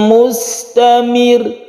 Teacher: karena roh itu sebelumnya ada kasro, maka ditipiskan dan ini pendek.